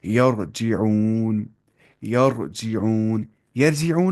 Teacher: را ساکن پہ زبر ہے تو موٹی آواز پڑھیں گے